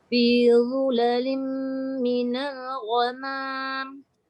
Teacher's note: Fi zulalim, rapat bibir terus masuk ni.